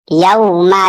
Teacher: यहाँ पे वाव साकिन से पहले जबर है, वावलीन होगा।